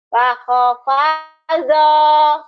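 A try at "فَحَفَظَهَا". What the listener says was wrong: Bukan paho, paha.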